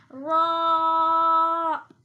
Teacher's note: اسے را کہتے ہیں, یہ پر یعنی کہ موٹی آواز سے پڑھا جاتا ہے